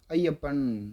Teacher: ஐ சொல்லி முடிக்கிறதுக்கு முன்னாடியே யா வந்து என்ட்ரி போட்டுறாரு. அப்போ ஐயுடைய உச்சரிப்பு குறைந்து 2 மாத்திரையிலிருந்து அரை மாத்திரை குறைந்து 1.5 மாத்திரையாக குறைந்து ஒலிக்கக்கூடிய இதை தான் நம்ம ஐகார குறுக்கம் என்று சொல்கிறோம்.